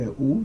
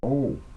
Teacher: And it's not just ooh, like people will say ooh. This actually has to come from the back of the throat, because it's the letter ayn.